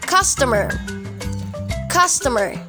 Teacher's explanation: Ang stress po ay nasa first syllable.